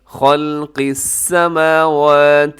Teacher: یہاں خا موٹا ہے، آگے لام باریک ہے، اسے خل نہیں کرنا آپ نے، یعنی کہ لام بھی ساتھ موٹا نہیں کرنا، صرف خا موٹا رکھیے گا، پھر اس کے بعد لام باریک ہے، پھر قاف وہ بھی گرین کلر میں ہے، اسے بھی آپ نے موٹا رکھنا ہے۔